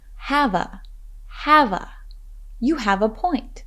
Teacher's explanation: listen for the linking of the words have and a